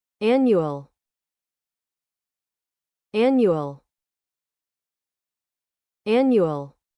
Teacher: when you use annual in this way the stress is on the first syllable